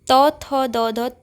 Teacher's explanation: यह दंत होता क्योंकि हमारी जीभ दांतों पर इसमें टच होती है